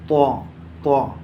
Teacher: طا کا، زبان کی نوک اور اوپر کے سامنے والے دانتوں کی جڑ